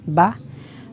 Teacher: होंठ जब हम बंद करेंगे तो उसके गीले हिस्से से बा अदा होगा